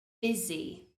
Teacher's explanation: Many people pronounce this word buzzy because they see the U letter, but that U is pronounced as an I, busy, busy. The S is also pronounced as a Z.